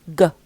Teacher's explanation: It's a consonant, and it's a velar voiced stop or plosive consonant